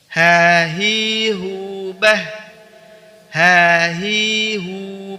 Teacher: huruf H dikeluarkan dari tenggorokan bagian bawah